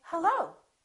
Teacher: when I answer the phone I can say hello so the pitch goes up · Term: rising intonation